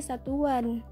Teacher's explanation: akan muncul bunyi pelancar W Apabila sebuah kata yang berakhir dengan bunyi u diberi sufiks an